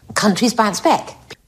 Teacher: back there you go countries bounce back back not back but countries bounce Beck which is almost like an e sound